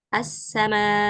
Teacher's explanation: setelahnya ada Hamzah Nah maka dibacanya jadi assama dipanjangkan empat harakat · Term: mad wajib muttasil